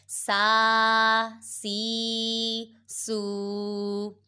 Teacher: سین کھرا زبر سا، سین کھرا زیر سی، سین الٹا پیش سو، سا سی سو۔ سین حروف صافیریہ میں سے ہے، اس میں سیٹی کی آواز ادا کریں گے